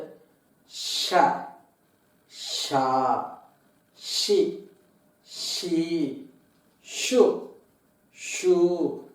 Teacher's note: அந்த husky sound மாதிரி ஒரு உஸ்ஸுன்னு ஒரு சவுண்டை ஃபாலோ பண்ணி தான் இதை சொல்லணும். அதே மாதிரி நாக்க மடக்கி ஷான்னு சொல்லிடக்கூடாது. · இந்த ஷ அப்படிங்கிறது வந்து ஒரு ஹஸ்கி சவுண்டோட அதை கண்டினியூ பண்ணி இந்த ஷான்னு சொல்லணும்